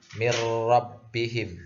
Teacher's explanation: tidak ada dengungnya sama sekali.